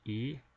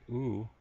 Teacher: E is produced when my tongue is actually right at the front of my mouth, whereas when I say oo, I actually pull my tongue back, and it's now located to the back of my mouth.